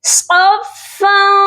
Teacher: صاد کو موٹا کریں گے اور فا کے ساتھ سختی سے ملائیں گے